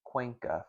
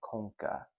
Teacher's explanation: including diphthongization of words like cuenca from Latin conca